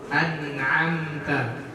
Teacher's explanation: huruf nun itu tidak juga seperti huruf syiddah yang tertahan, dia sedikit mengalir tapi tidak memantun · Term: bainiyah